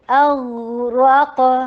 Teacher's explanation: حمزہ شدید کیجیے اور غین کو چلاتے چلے جائیے، غین رخاوا بھی ہے، غین ہیوی بھی